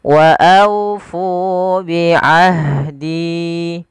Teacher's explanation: aunya lembutkan sambil dimonyongkan sedikit bibir kita ke depan untuk menyempurnakan daripada huruf wawnya